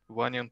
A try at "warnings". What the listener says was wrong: Very good. Don't forget the S. Warnings.